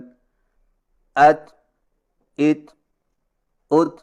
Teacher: زبان کی نوک کو ثنائے اولیہ کی جڑ پر مضبوطی سے اس طرح لگائیں کہ آواز کے سختی سے رکنے کے فوراً بعد معمولی سی گھساہٹ ہو، یا یوں سمجھیں کہ زبان کی نوک تالو پر سختی سے لگنے کے فوراً بعد معمولی سی گھساہٹ ہو۔